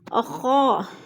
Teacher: الف خالی سے پہلے خا کے اوپر زبر ہے تو الف مدہ کو ہم نے ایک الف دو حرکات کے برابر لمبا کر کے پڑھنا ہے